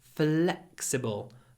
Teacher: say flexible make sure you stretch the L flexible and then pronounce a very short e before the unvoiced C